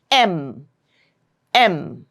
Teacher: place is bilabial. For the sound M, both your lips are getting pressed together. It's M. M, right? · Just like P and B, M also is bilabial.